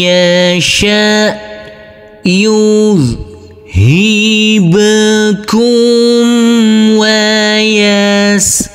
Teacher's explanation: Huruf nun yang bersukun ini bertemu dengan huruf ya yang bertasdid, maka huruf alif langsung masuk ke huruf ya. Huruf nunnya kita leburkan, huruf ya kita tekan, kita tahan, serta kita dengungkan. Karena ini adalah bacaan idgham bi ghunnah.